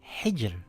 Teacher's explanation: The letter before that has a kasra. It reads as hijr with a light Ra.